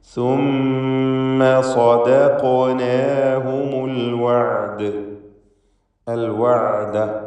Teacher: ആയിന് ഹൽഖിയായ അക്ഷരമാണ്, ശ്രദ്ധിക്കണം. തൊണ്ടയുടെ മധ്യമാണല്ലോ അതിൻ്റെ മഖ്റജ്.